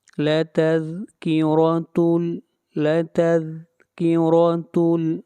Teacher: را کو موٹا پڑھیں گے، را کے اوپر زبر ہے۔